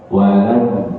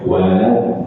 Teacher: ketika lam sukun suara dia mengalir, namun mengalir sedikit, hanya sedikit, tidak semengalir rokhawah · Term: bainiyah